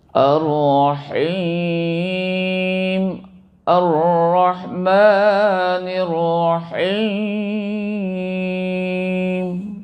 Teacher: rahimnya itu mad arid l sukun itu harus dipanjangkan. Panjang ketukarnya adalah 2 sampai dengan ee enam ketuk ya.